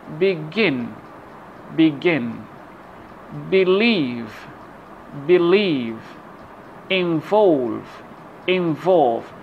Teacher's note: so we have the mark of stress on the second syllable of the word and this stress is called a primary stress because the mark